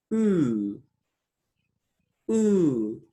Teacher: Long U, as you can see in the diagrams, is a back, close, rounded vowel. If you pay attention to the tongue position, it is even higher as for short U.